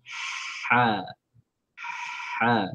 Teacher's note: Tempatnya pada bahagian katup epiglotis dengan cara menekannya sambil menghembuskan suara udara. Ha. Mari kita tekan lah bagi dia tutup, bagi susah sikit nak sebut lah. · Huruf ha adalah huruf yang dikeluarkan dari tengah tenggorokan, daripada kerongkong lah. Tempatnya pada bahagian katup epiglotis dengan cara menekannya sambil menghembuskan suara udara.